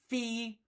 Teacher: the F sound in English f is known as a labio dental because my lip is touching my tooth